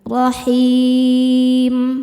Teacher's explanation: huruf yang disukunkannya mim, maka haknya panjang, boleh 2 atau 4 atau 6 harokat asal konsisten dalam sekali duduk. · rahim saat berhenti hukumnya mad arid lisukun karena mad thobi'i bertemu dengan huruf yang disukunkan karena waqaf mad thobiinya ya sukun didahului kasrah huruf yang disukunkannya mim maka h-nya panjang boleh dua atau empat atau enam harakat asal konsisten dalam sekali duduk